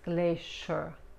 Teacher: la SH se pronuncia como la CH en español, pero en vez de colocar la punta de la lengua contra los dientes frontales, la lengua se mantiene más hacia atrás